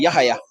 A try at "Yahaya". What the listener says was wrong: No, pronounce the H hard. Yahaya.